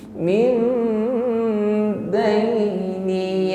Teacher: Fa innahu yasluku min nun sukun bertemu ba, maka di sini ada hukum iqlab. Mengucapkan nun sukun min kita ganti dengan huruf mim. Mim dengan berdengung.